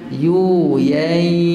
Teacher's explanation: Nun sakinah bertemu dengan ya. Idgham ma ghunah. Bay yuyai. Masukkan dan dengung.